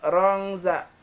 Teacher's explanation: antara samar dan dengungnya sama, mirip bunyi eny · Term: ikhfa ausat